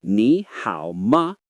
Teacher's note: Say the ni with a rising sound, keep hao low, and finish with a light ma.